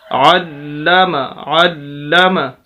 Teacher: 2 मरतबा पढ़ा जा रहा है लाम, और दूसरा ये कि सख्त करके पढ़ेंगे, आवाज़ को रोक कर जोर देकर। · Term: शद